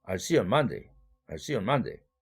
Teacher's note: 그래서 대강세와 소강세로 나눌 때 see와 man만 대강세를 받고 나머지는 다 소강세. 소강세라 하면 참 아니면 약강세죠.